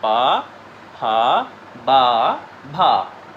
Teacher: तो ये सब देखिए आपकी जो दोनों ओठ ऊपर नीचे की हैं एक दूसरे से टकरा रही हैं। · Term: ओष्ठ